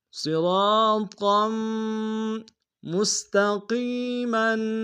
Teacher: قاف کو یا کے سامنے آئیں گے، یا مدہ ایک دار میں کھینچیں گے، میم کے اوپر تنوین ہے، غنہ کریں گے